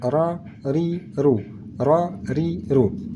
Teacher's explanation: kalau kita rasakan seolah-olah semacam bergeser antara ujung lidah dengan langit langit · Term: huruf ra